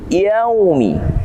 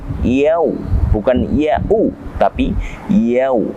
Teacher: bertemu dengan waw sukun atau waw yang mati, maka hukum tajwidnya adalah mad layyin atau mad yang lembut. Layyinun artinya lembut.